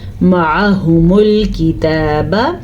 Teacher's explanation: جب کسی لفظ کو صحیح طریقے سے نہ پڑھا جائے تو پورے آپ سینٹینس یعنی پوری آیت کا معنی غلط ہو سکتا ہے، اسی لیے اس کو آپ نے پڑھنا ہے معہم، ٹھیک ہے، معہم الکتاب. یہ جو آپ کو ہا نظر آ رہی ہے یہ سینے سے نکلتی ہے، گلے سے اس کو نہیں نکالنا. اکثر لوگ اس کو پڑھتے ہیں معہمل، معہمل، یا پڑھتے ہیں معہمل، دونوں غلط ہیں. · با کو لمبا نہیں کرنا، تا کے اوپر کھڑی زبر ادا کرنی ہے